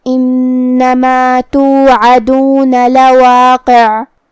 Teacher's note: کلمت لواقع میں یہاں قاف کے نیچے زیر ہے تو اس کا دھیان رہے، آخری میں حرف العین پہ رکیں گے تو اس پہ جزم سے رکیں گے تو ہم حرف العین کو ظاہر کریں گے · کلمت انما میں یہاں نون کی تشدید کا دھیان رہے، ہم اسے دو حرف کے برابر پڑھیں گے